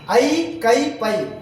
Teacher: தனித்து வரும் இடங்களில் தனக்குரிய 2 மாத்திரை அளவில் முழுமையாக ஒலிக்கிறது. அப்ப ஐ அப்படிங்கிற இது நெடில் எழுத்து, அது தனிச்சு நின்றுச்சுன்னா 2 மாத்திரை அளவிலாக ஒலிக்கும்.